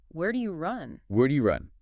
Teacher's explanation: The voice comes down and anchors the sentence. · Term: fall